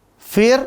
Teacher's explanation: ro kelompok kelima ya, ujung lidah, langit-langit belakang